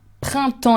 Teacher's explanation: you have the double nasal sound and the PS at the end that you do not pronounce